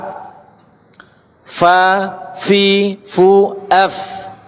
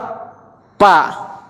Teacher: Pertengahan bibir. Yaitu bibir bagian bawah dalam pada posisi menempel bertemu dengan kedua gigi seri atas